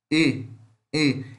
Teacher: Este E, ele é uma vogal semifechada, frontal também